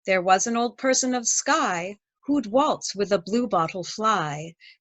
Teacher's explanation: the rhythm is anapestic having a da-dum da-dum feel to it · and lines three and four are anapestic dye meter this means the first second and last lines have three stressed syllables while the third and fourth have only two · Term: anapestic trimeter